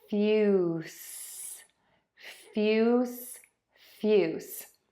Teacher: The tip of your tongue is either pointed down or just behind the top teeth. Air continuously moves out of your mouth. Your voice box is off and it is not moving. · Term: S sound